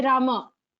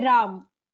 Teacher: last letter of the word is sounded as halant in Hindi